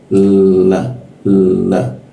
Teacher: Kalau la di Indonesia itu lidahnya ditemukan dengan gigi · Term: la Indonesia